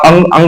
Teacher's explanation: तो अनुस्वार का उच्चारण सबसे पहले नाक से होगा, उसके बाद मुख से होगा।